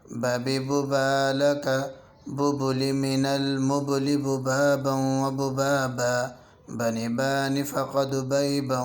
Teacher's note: با ادا ہوتا ہے دونوں ہونٹوں کے تری والے حصے سے، یعنی اندرونی حصے سے۔ جب یہ دونوں ہونٹ آپس میں ملتے ہیں تو اس سے با ادا ہوتا ہے